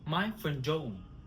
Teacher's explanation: We drop the D of friend.